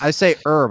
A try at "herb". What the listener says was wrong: Right, but the H is silent for herb.